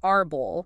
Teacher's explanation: And then llanas, they have the stress on the second to last syllable, like arbol, meaning tree. The emphasis is on bol.